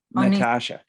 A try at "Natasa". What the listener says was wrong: Yes, Natasha with S, not SH. Yes, SA. Natasa.